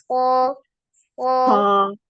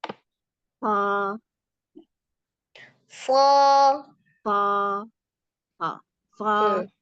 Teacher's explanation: sh pendek aja tapi dia tebal